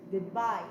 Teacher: good here is unstressed, while bye is stressed. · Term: iamb